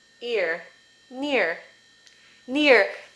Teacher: You're going to make a small cap I, like the sound I in kit. Then, you're going to make a schwa with rhoticity. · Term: vowel plus R